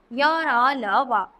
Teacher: अंतस्थ व्यंजन, तो जिन वर्णों का उच्चारण स्वर और व्यंजन के बीच का सा हो उन्हें अंतस्थ व्यंजन कहते हैं। इनके उच्चारण में वायु का अवरोध बहुत कम समय के लिए होता है।